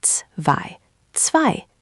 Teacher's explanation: it's not quite an S sound. Think of it like the ts in cats. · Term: ts sound